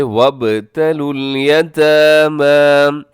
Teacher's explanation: یہاں با جو ہے با حروف قلقلہ میں شامل ہے، تو با پہ قلقلہ کیجیے گا